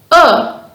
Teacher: is voiced meaning your vocal chords vibrate when producing the sound your tongue is in the lower parts of your mouth when pronouncing the sound arrow one points to the vocal chords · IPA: /ʊ/